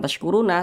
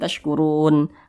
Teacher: Ini kita berwaqaf tepat di huruf nun. Huruf nun tidak dibaca panjang, makanya kita sukunkan atau kita matikan